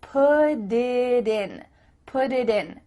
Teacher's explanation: desk do you see how that makes it much faster because instead of spending the time to let the air come out of your mouth your tongue is just tapping the top of your mouth to make a d